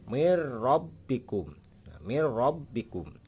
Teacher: Nah ini nun mati ya, nun mati ketemu dengan huruf idgham bila guna ya, ini bila guna, ini akan dibaca jelas ya. Jadi dibacanya tidak dengung mengikuti huruf ro ya, karena di idgham bila gunah itu ada dua, lam dan ro. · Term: idgham bilagunnah